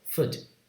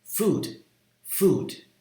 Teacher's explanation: unlike the word foot which is short and relaxed food is tense your lips are more protrude and it's a slightly longer that's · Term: tense vowel